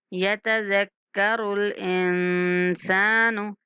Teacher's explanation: یوم یتذکر الانسان ما سعی، یوم یوم یہاں پہ واو لین ہے، یوم یتذکر الانسان، یتذکر الانسان، نون پر اخفا کرتے ہوئے سین کو کھینچ کے پڑھنا ہے۔ انسان ما سعی، ما میم کو بھی ایک سیکنڈ تک کھینچنا ہے، سعی عین کو بھی کھینچنا ہے، ما سعی۔